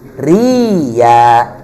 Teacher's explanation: Cuman bedanya hamzah sukunnya telah diibdal, telah diganti menjadi huruf ya sukun